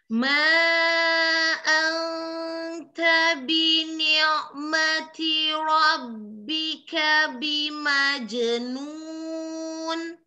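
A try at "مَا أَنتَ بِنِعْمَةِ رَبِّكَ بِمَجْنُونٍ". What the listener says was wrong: Bi ni'mati. Binya, nunnya, rahangnya turunkan. Bi ni'mati. Jangan terlalu ke dalam bini, jangan terlalu ke dalam. Maksudnya jangan jadrul lisan, akar lidahnya jangan dinaikkan. Bini, jangan dinaikkan. Bini mati, bini mati, bini mati. Untuk manya harokatnya lidahnya relax, lidahnya relax. Ma kayak bilang ma. Rabbika, roknya tebalkan. Rabbika, roh. Tebalkan roknya.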